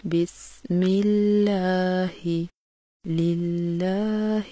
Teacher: لفظ اللہ سے پہلے اگر زیر آ جائے تو اس کے دونوں لام کی ادائیگی باریک کی جاتی ہے